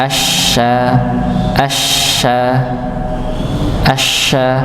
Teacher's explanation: di tengah lidah. Ya, bukan di bibir bukan asya asya enggak perlu dimaungkan ngih. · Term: huruf syin